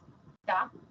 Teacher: es la punta de la lengua la que toca los dientes